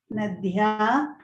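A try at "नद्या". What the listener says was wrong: Not dhya. Nadya. Alpa prana.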